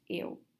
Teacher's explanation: In a Kiwi English, we have a tendency to not pronounce the L sound.